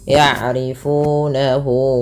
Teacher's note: Pada lafal fu mad tabi'i, yaitu ditandai dengan huruf fa yang bertemu dengan huruf waw sukun, yaitu ada yang dhammah bertemu dengan waw sukun. Maka dia mad tabi'i 2 harakat.